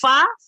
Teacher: jadi bibir tapi agak maju ke depan ini ya jadi bibir sama Gigi